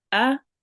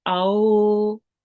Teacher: We join on to the waw, ease it and make it long for 2 counts. Aw, ba maftuh, ba, just 1 count, ba. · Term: waw leen